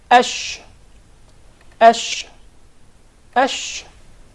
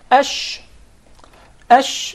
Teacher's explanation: we we use the the middle part of the tongue exactly so there is a very notable elevation in the middle part of the tongue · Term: sheen